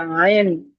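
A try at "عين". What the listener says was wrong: না, আইন শুধু বললে হবে না ভাইজান, এই দেখেন নিচে 3 বলে লেখা আছে, 3 লেখার অর্থটা কি জানেন তো? মানে 3 আলিফ টানতে হবে। আইন, বুঝতে পেরেছেন?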